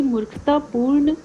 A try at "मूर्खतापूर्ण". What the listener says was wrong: मूर्खता, थोड़ा लंबा स्ट्रेच करो इसको, ऊ को।